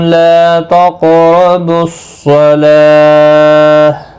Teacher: تقربوا الصلاة صاد حروف مستعلیہ ہے، پر پڑھا جائے گا، لام کے اوپر کھڑی زبر ہے، 1 الف کی مقدار کے برابر کھینچ کر پڑھیں گے۔